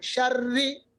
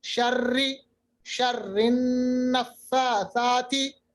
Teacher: थोड़ी सी रा में लर्जराहट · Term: सिफती तकरीर